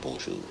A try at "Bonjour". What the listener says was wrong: Non, là, t'as l'air de me dire au revoir. Dis-moi vraiment bonjour.